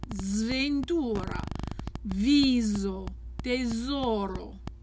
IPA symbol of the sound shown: z